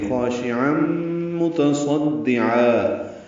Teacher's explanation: تنوین کے بعد میم آنے کی وجہ سے ادغام ناقص ہوا ہے، غنہ کریں گے